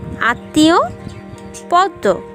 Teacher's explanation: পদের মধ্যে বা শেষে মফলা যুক্ত হলে সেক্ষেত্রে উচ্চারণে বর্ণের দ্বিত্ব হয় এবং সামান্য নাসিক্য স্বর হয়